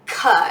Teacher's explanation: start with cut and I have to start with my tongue the back of my tongue is pressed up against the top of my mouth for just like a brief moment